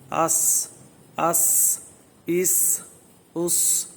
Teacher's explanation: سین جو ہے یہ اس کی جو ادائیگی ہے وہ اسی جگہ سے ہے، یعنی زبان کا جو ہے سرا جو ہے تو اوپر والے دانت اور نیچے والے جو دانت ہیں جہاں پر ملتے ہیں وہاں پر جو ہے نا سین ادا ہوتا ہے